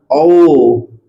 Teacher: कंठ प्लस ओष्ठ है। ओष्ठ का मतलब ओठ।